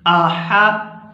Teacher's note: यहाँ हा है, हा को गले से अच्छी तरह अदा करेंगे